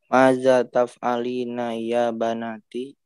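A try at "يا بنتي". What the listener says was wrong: Ya binti. Laisa banati.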